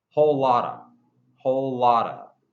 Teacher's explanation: we have that schwa pattern. Stressed, non-stressed, and that's why the of sounds like a.